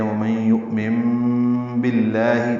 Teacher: مَن میں ادغام ناقص غنہ ہوگا، یؤمن میں حمزہ ساکن جھٹکے سے ادا ہوگا. نون ساکن کے بعد با آنے کی وجہ سے اقلاب ہے، نون کو میم سے بدل دیا گیا ہے، اس کو ابدال بھی کہتے ہیں.